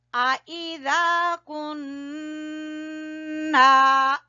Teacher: نون کے اوپر آپ غنہ کریں گے، دیکھیں نون مشدد کا غنہ، پھر الف مدہ